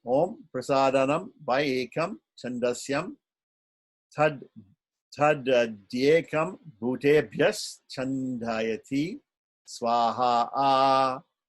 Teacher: We should offer this, make the offering into the fire, and the word is Swaha, but there is a Dirgha Swarita, or a higher tone, an extended tone, extended high tone at the end of Swaha. Okay, so it should be Om Prasadanam Vai Ekam Chandasyam Tad Dyekam Bhutebhyas Chandayati Swaha.